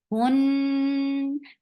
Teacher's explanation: Noon will get sifa of hunna. For a longer time, you're keeping the sound in your nose.